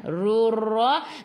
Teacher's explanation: Ra baca dengan tebal, ra baris atas tafkhim. Ra kena ada getaran, takrir sifat hurufnya, tapi jangan banyak, sederhana sahaja.